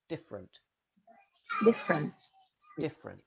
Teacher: Chocolate. Finally, in different, the first E almost always disappears, so you link directly from F to R. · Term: elision